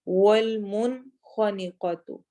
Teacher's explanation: کیونکہ اس کے بعد عین آ رہا ہے. والمنخنقۃ، والمن نون ساکن کے بعد خا آ رہا ہے، خا بھی حروف حلقی میں سے ہے، اس لیے ہم اس نون کو بھی واضح پڑھیں گے